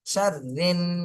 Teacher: রিন এটা হলো ওয়াজিব গুন্না, হরকতের বামে নুনে তাসদিদ, ওয়াজিব গুন্না।